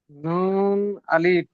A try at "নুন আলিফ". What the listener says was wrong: নু আলিফ নয়, নুন আলিফ।